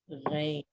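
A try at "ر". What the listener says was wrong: No, ra, but from your throat, like an engine. Ra, rain.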